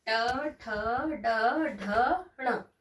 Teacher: ट में जीभ हमारी थोड़ी टिल्ट होती है, मुड़ती है।